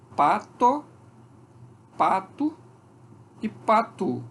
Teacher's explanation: quando eu comparo essa pronúncia pato e patu, a variação, portanto, entre o e u, que eu já sei que são dois fonemas, eu vou chamar isso de neutralização.